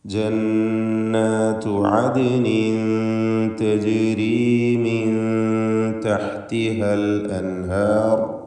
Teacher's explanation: സാക്കിനത്തായ നൂനിനെ ഇൽഹാർ ഹൽക്കി നൽകി മണിക്കാതെ വെളിവാക്കുകയാണ് വേണ്ടത്